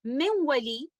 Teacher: Letter नून जुबान की नोक से अदा होता है और लेटर वाव दो होंठों से अदा होता है।